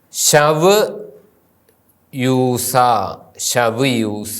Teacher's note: ആ എന്ന ഹൃസ്വ സ്വരത്തിനു ശേഷം വാവ് വരുമ്പോൾ ഔ എന്ന് ഉച്ചരിക്കുന്നു